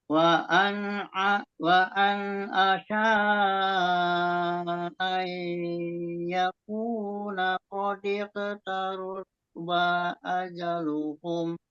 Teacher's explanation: asanya agak panjang, ai-nya lebih ditahan lagi idghamnya